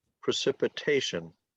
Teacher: syllables precipitation so it's on it's a it's a 5-4 word the emphasis is on the fourth syllable · The emphasis is on the 4th syllable